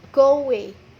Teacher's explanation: Saat kita mengucapkan kata go away, terdapat penambahan suara w. Nah, suara w ini disebut dengan intrusion.